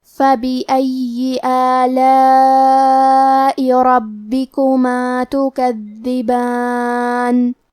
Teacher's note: کلمت ربکما میں حرف را کو موٹی آواز میں پڑھیں گے، با کے تشدید کو ظاہر کریں گے۔ کلمت تکذبان میں دال پہ تشدید ہے تو ہمیں 2 حرف کے برابر دال کو پڑھنا ہے۔